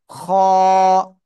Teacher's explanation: এ অক্ষরটা কিন্তু মোটা আওয়াজ, এ কিন্তু আকার গ্রহণ করে না। খ গলার শেষ ভাগ থেকে উচ্চারণ হয়।